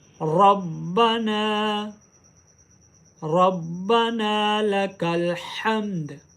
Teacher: नून के साथ अलिफ है, इसको एक अलिफ की मिकदार लंबा करें।